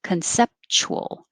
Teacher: i'm pushing it together and making just three syllables